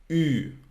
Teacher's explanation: you put your mouth like U, but you want to say I, so it's Ü, okay, like in Tyrol, okay? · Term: U umlaut